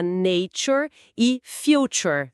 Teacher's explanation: tem que fazer um som meio de xê, né? Então fica nature e future. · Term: palatalização fonética